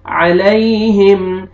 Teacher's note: کو اپنے صحیح مخرج سے ادا کرنا ہے آپ نے، علی، یا لینا ہے، نرمی سے ادا کریں گے، یا ساکن سے پہلے زبر ہے ، علیہم، میم ساکن کا اظہار ہے، جلدی پڑھیں گے، ہم،